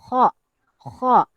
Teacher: Lidah terangkat ke lelangit saat mengucapkannya. Okey, sehingga suara menjadi naik dan tebal. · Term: huruf isti'la